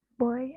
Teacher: low back to high front